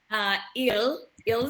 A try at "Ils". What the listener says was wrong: Il, you don't pronounce the S, okay?